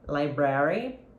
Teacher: okay I stress the first syllable when I say library but some people stress the second syllable